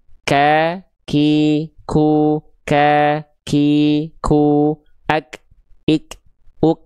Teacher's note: Hams itu artinya adalah terpercik. Terpercik nafas atau keluar ada sedikit nafas ya.